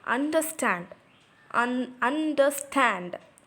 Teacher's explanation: So, un is a weak syllable, is a strong weak syllable, and stand is a strong syllable. And here, two weak syllables are followed by a strong syllable, so it is an anapest.